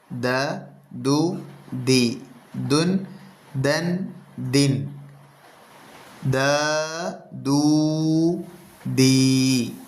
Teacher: നാവിൻ്റെ തലയും മേലെ മുൻപല്ലുകളുടെ മുരടും തമ്മിൽ ചേരുമ്പോഴാണ് ദാൽ എന്ന അക്ഷരം ഉച്ചരിക്കുന്നത്